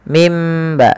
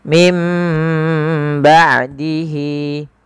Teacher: dibaca dengan huruf mim mim ba sambil ditahan sepanjang dua harakat baru dilepaskan